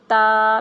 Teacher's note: جب ہماری جو زبان کی نوک ہے یہ دانتوں کی جڑوں کے جا کے لگے گی